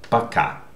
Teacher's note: And in the second word, пока, the stressed vowel is syllable is ка, so а. Okay, this о is not stressed, that's why it is pronounced а. So please remember that when the letter, the vowel, is not stressed, it changes its pronunciation.